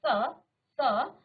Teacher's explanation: इसका उच्चारण करते समय आपकी जीभ आपके दांतों को क्या करती है, टच करती है। ठीक है, दंत्य। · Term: दंत्य स